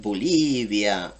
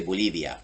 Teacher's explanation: The Bolivian accent is much flatter. It's much chiller. It's a little bit slower.